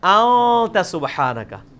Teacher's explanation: اخفا اسے کہتے ہیں کہ خفی کر کے پڑھ رہے ہیں، نون پورا واضح نہیں کر رہے، ان نہیں پڑھ رہے، پڑھ رہے ہیں.